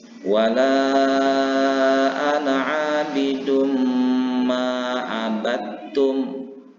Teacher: membaca huruf Ta ini seolah-olah bertasydid · memasukkan huruf dal yang berbaris sukun ini kepada huruf yang kedua yaitu huruf ta, dan membaca huruf ta ini seolah-olah bertasdid atau menjadi bertasdid. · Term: idgham mutajanisain